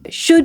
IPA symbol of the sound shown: ʃəd